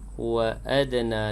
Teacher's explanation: dal yang sukun kalimah ni juga berdetak kecil